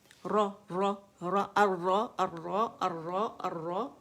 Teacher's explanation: اوپر جا کے ہماری زبان کہاں لگے گی؟ ایلویولر رج، جہاں باریک باریک لائنیں پڑے، سیمی آرچ، نون کے مخرج کے پاس. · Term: را کا مخرج